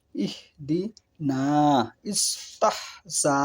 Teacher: ২ নম্বরে হামজা ও হায়ে হাওয়াজ। এই বর্ণ দুটি হলক বা কণ্ঠনালীর গোড়া হতে উচ্চারিত হয়।